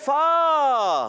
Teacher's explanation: فا کا مخرج ہے اوپر والے دانتوں کے کنارے, جب نیچے والے ہونٹ کے تر حصے سے لگتے ہیں تو ادا ہوتا ہے فا